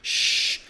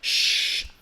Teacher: do it with a paladar of your of your mouth and it's a fricative because it's made with friction right